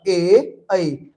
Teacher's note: ए ऐ दोनों के उच्चारण कंठ और तालु दोनों से हो